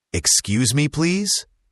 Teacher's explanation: Also, notice the intonation. When you ask someone to move, it's often a polite upward tone at the end. · excuse has an x sound that sounds like ks or kz. And please should end with a z sound, not an s sound.